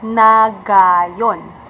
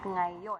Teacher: So it should be pronounced at ngayon. The Americans are pronouncing the NG as if it is separate letter sounds. So you should combine the two, the N and the G, to make the sound nang.